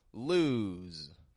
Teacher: we pronounce the word lose we're making sure that that the S sounds like a z we're giving it voice